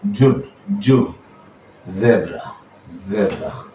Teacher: এটা মৌমাছি যে শব্দ করে এরকম শব্দের মতো আসবে